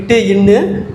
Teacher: நாவின் நுனி அன்னத்தின் நுனியை தொடுவது